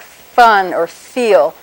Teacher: the air is coming out continuously but with your teeth touching your lips · that very first sound starts by putting your upper teeth poking them into your lower lip so these upper teeth touch the lower lip and yet we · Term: fricative, fricatives